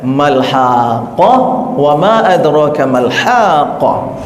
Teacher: Qaf itu ada di pangkal lidah, ya, termasuk huruf isti'la yang berat, ya, dekatnya dekat sini, ya, tenggorokan. · ha di tengah-tengah tenggorokan, ya, wastol halki, tengah tenggorokan, terus dipanjangkan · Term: huruf qaf, huruf ha